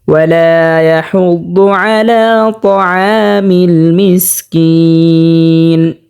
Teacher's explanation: তাআমিল আ স্পষ্টভাবে উচ্চারণ করতে হবে হলকের মধ্যখান থেকে। তাআমিল মিসকিন, 3 আলিফ পরিমাণ টানিয়ে পড়তে হবে, মধ্যে আরজি হয়েছে